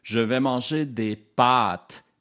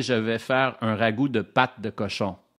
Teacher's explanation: des pâtes la voyelle est plus longue et pâte la voyelle est courte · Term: voyelle longue